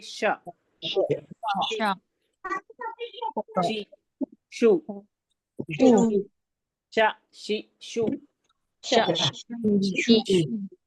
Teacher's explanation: जबान के बीच उसके मुकाबिल ऊपर के तालू से शन अदा होता है